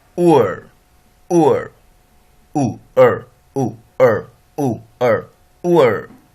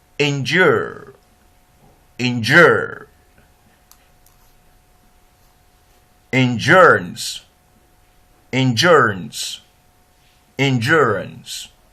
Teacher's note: The last closing diphthong, the last centering diphthong sound is ur, ur, oo, oo, oo, ur. We begin with monophthong u and end with monophthong that's a schwa.